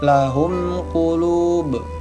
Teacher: Jadi bukan mim juga bukan ba. Maka dibaca jelas di bibir, izhar syafawi.